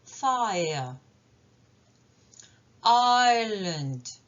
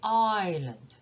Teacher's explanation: Donc en fait, c'est une diphtongue auquel j'ai rajouté un son schwa. Donc c'est 3 sons voyelles. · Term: triphtongues